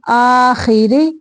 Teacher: را باریک پڑھیں گے